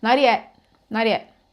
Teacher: Se vocês observarem, se vocês forem bem atentos, né, no listening, ficarem bem ali ouvindo com atenção, vocês vão notar que isso acontece com frequência. O T no final das palavras é simplesmente cortado, ele é ignorado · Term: T inexistente